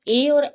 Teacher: यह ऐसे वर्ण हैं जो तालू और गले की सहायता से बोले जाते हैं